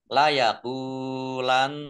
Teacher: Nun tasdid dibaca gunnah atau mendengung, ditahan 2 harokat.